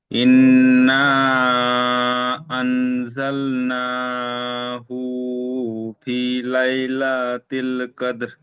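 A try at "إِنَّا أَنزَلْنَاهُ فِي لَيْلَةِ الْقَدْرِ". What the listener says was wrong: মাশাআল্লাহ, হুটা টান হয়ে যাচ্ছে, এই হুটা টান হবে না, ফিটা টান হবে। আনজাল্লা, নাটা টান দিয়ে আর হুটা তাড়াতাড়ি পড়েন। আনজাল্লাহু ফি লাইলাতিল কদর।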